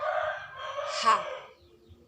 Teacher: udara yang keluar dari paru-paru digesekkan ke tenggorokan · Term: bunyi larigal